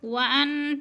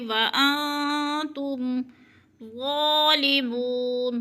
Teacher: نون ساکن کے بعد تا حروف اخفا میں سے ہے تو لفظ کو چھپا کر پڑھیں گے